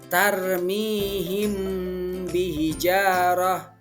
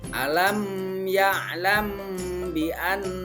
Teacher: apabila ada huruf mim sukun bertemu dengan huruf ba. Nah, jadi ketika ada mim sukun bertemu dengan huruf ba, maka kita harus membacanya dengan samar, yaitu di antara mim dan ba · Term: ikhfa safawi